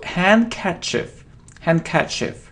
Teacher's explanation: We don't pronounce D, so handkerchief.